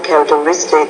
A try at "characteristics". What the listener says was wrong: Now you're not pronouncing your S endings. Again, you said characteristic. I say characteristics. So you have to remember you need to pronounce those grammatical word endings at the ends of your nouns and also your verbs.